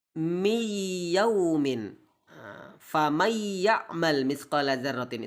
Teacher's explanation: Contoh miyaumin, famay ya'mal mithqala dzarratin, itu kadang nun sukun bertemu dengan ya, maka menahan suara pada huruf kedua sambil memberikan sifat huruf yang sempurna. Sifat hurufnya huruf ya harus sempurna, yaitu dialirkan melalui rongga hidung. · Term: idgham bigunnah